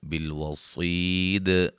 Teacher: وقفاً دال پہ قلقلہ کو واضح کریں گے